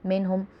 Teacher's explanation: نون ساکن یا تنوین کے بعد حرف حلقی میں سے ہا ہے، منہم اس لیے ہم ظاہر کر کے پڑھیں گے۔ ہا پیش میم ہم میں اظہار شفوی کا قاعدہ ہو رہا ہے، میم ساکن کے بعد با میم الف کے علاوہ یا آ رہا ہے۔